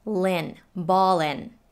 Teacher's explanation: the l from ball links to the eye from in